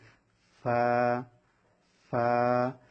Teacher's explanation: ফা ফা। নিচের ঠোঁটের প্যাড যখন উপরের দাঁতের সঙ্গে লাগবে ওখান থেকে ফা এভাবে উচ্চারণ হবে